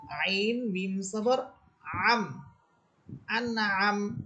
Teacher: আইন হচ্ছে কণ্ঠনালী মধ্যখান থেকে